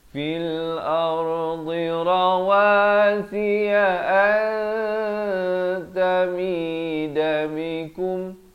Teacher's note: Rawasiya an, di sini ikhfa hakiki disamarkan dua harakat. Jangan dijelaskan, jangan baca antamida bikum.